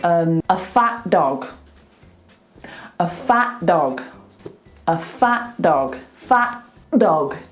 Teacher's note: Don't do the whole T, just do half of it.